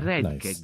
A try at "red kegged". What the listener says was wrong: Red kegged. Did he even pronounce the T? Or did he say red keg?